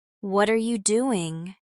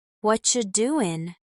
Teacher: The are you turns into cha because the R blends with the Y sound and the Y softens into the CH sound. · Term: blending